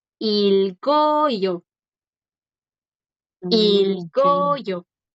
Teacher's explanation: Ahí la g si suena sin problema porque ahora le sigue una vocal.